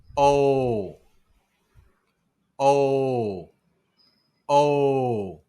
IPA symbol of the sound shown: o